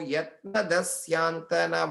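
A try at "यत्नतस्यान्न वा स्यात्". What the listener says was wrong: Syan, you're putting a tha there. Yatna syan vasyat. Syan na, double na varudhu, in and a na, syanna vasyat.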